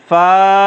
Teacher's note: فا کو پڑھنے کا طریقہ یہ ہے کہ ہمارے جو اوپر کے دانت سامنے کے ہیں چوڑے والے، وہ نیچے کے ہونٹ میں لگیں گے تو اس سے فا ادا ہو جائے گی۔